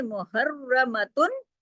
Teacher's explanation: را کو موٹا اور ڈبل را ہے تشدید کی وجہ سے، محرمتن، تا دو پیشتن کی جو تنوین ہے اس کو پورا پورا پڑھیں گے، اظہار حلقی ہوگا، کیوں؟